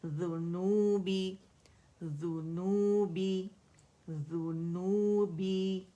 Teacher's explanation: ذیل اور نون میں آپ دیکھیں کہ ذیل کے بعد فوراً ہم نے نون کا مخرج پکڑنا ہے